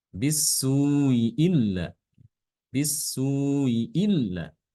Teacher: membaca ee huruf mad sebelum Hamzah itu dibaca Dua harakat